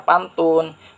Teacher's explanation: bunyi yang dihasilkan oleh keterlibatan ujung lidah atau apex dan gusi atau alveolum atas. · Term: bunyi apikoalveolar